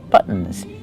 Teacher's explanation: When you have T-O-N at the end, we say buttons. We do a stop T and fall to the N.